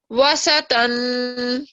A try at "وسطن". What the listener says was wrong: وسطن, تو ہے نا, اس کو تھوڑا سا موٹا کر کے پڑھیں.